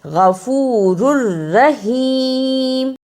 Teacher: غفور الرحیم، اسے غفور رحیم نہیں پڑھنا. را پر 2 پیش یعنی تنوین ہے، لیکن دوسری را پر شد ہے، را کو را سے ملانا ہے